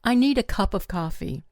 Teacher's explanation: The words need, cup, and coffee get the emphasis. The smaller words become weaker. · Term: sentence stress